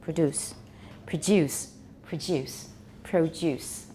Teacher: don't say produce we say produce everybody remember alveolars plus you an American is usually just alveolar plus ooh